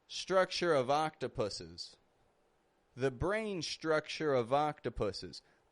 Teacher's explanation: again using the V sound to link our words together